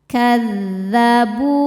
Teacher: Kadzabu, bu hukumnya mad tabi'i dhahiri sebab ada waw sukun sebelumnya dhammah. Cara bacanya huruf ba dipanjangkan 2 harokat.